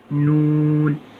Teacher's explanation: اس کے بعد ہے نون۔ زبان کا کنارہ اور اوپر کے سامنے کے ایک نوکیلے دانت سے لے کے دوسرے نوکیلے دانت کی مسوڑوں سے ادا ہوتا ہے